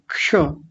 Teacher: क का उच्चारण तो हल्का सा आएगा और मूर्धन्य शकार का ज्यादा आएगा क्योंकि वह बड़ा है पूरा है। क्ष क का बहुत हल्का उच्चारण आएगा।